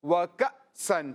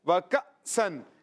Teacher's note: یہ چونکہ حمزہ ہے، اس کو جھٹکے کے ساتھ پڑھتے ہیں